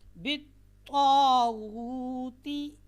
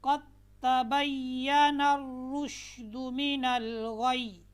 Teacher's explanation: طا اور تا میں آپ نے فرق کرنا ہے. طا جو ہے یہ موٹی پڑھی جائے گی اور جو تا ہے یہ باریک پڑھی جاتی ہے. طا اور تا کا مخرج ایک ہے، لیکن ان میں جو صفات ہیں وہ الگ الگ ہیں.